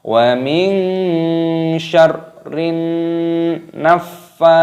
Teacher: ini nunnya berharokat tasdid, maka ditekan, dimasukkan, dan disertai berdengung. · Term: idgham samsiyah